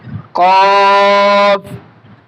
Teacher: হরফের মাখরাজ হচ্ছে জিহ্বার গোড়া তার বরাবর উপরে তালুতে লেগে দিতে হবে। জিহ্বার গোড়া তার বরাবর উপরে তালুতে লেগে দিয়ে হরফটি উচ্চারণ করতে হবে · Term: মৃদু মোটা